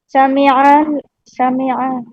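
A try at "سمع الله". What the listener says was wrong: आयन को लाम में मिलाना है, अलिफ में नहीं मिलाना है, अलिफ टूट जाएगा। आयन को लाम में मिलाइए, अगर मिलाना नहीं रहेगा तब हम अल्लाह अकबर कहते हैं, लेकिन लफ्ज जलाला में मिलाना हो तो अलिफ नहीं पढ़ा जाएगा।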